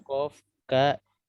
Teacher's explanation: ini huruf ini kalau kita rasa-rasa dia keluarnya dari lidah. Kok sama ka itu di pangkal lidah paling ujung, pangkal lidah paling dalam.